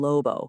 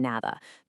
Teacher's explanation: The lips or the tongue, they just touch for a split second, really passively, without that muscular force we're so used to using in English. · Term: elastic closure